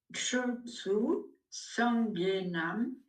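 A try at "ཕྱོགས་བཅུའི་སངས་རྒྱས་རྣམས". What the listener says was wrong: alors attention, Chokchu Sangyenam. Chokchu Sangyenam. Il faut qu'on entende le génitif. En tout cas, à la lecture pour l'instant. Maintenant, après, Chokchu Sangyenam, ça ne veut pas dire que les Tibétains, ils vont toujours hyper insister sur le génitif. Parce que pour eux, c'est évident. Mais pour nous, c'est bien de le marquer.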